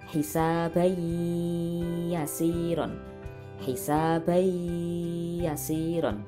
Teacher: tanwin bertemu dengan huruf ya, dibaca memasukkan dan dengung. Hisabai yasiron, seperti itu suara yang ada di dalam hidung.